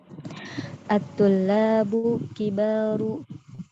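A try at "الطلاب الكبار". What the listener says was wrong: Dibaca alif lamnya. Alif lamnya dibaca. At-tullabul kibaru.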